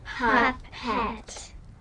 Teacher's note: Pup is stressed. The eh changed to what sound? What do you call it? Schwa.